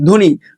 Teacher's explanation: ধয়ের সাথে বয়ে যুক্ত আছে, কিন্তু এখানে ব ফলার উচ্চারণ হবে না